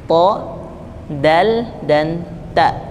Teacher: punggung ujung lidah pada posisi pangkal dua gigi seri, yaitu huruf ta, huruf dal, dan huruf ta